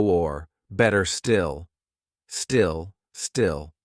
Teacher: A dark L is when you take this part of the tongue and you press it just here, just up above the teeth, and you go. It's like your tongue rises up the back of your throat and blocks the airflow, so you can't get a really nice sound out.